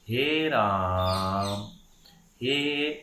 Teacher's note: हे की आवाज़ जो है हमने 3 गुना ज़्यादा रखी, इसलिए उसके आगे 3 लिखा रहता है। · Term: प्लुत स्वर